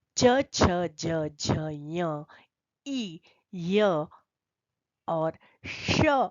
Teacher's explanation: जब हम च बोलते हैं तो हमारी जीभ उठती है और ऊपर की तरफ एक स्थान है जिसका अपने पश्च भाग से स्पर्श करती है जिसे कहते हैं तालू और वर्ण निकलते हैं च छ ज झ ञ इ य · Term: तालव्य